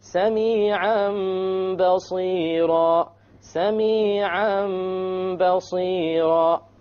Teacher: We change the Tanween into a Meme, and that is called iqlab. · We change the Noon into a Meme, and we perform a Ghunnah on it.